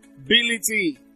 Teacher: the stress is on the third syllable from the end, ability, so it's on B.